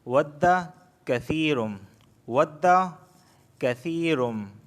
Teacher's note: یا ساکن سے پہلے زیر آیا ہے تو اس وجہ سے میں کثیر کو کھینچ رہا ہوں، یا مدہ ہونے کی وجہ سے۔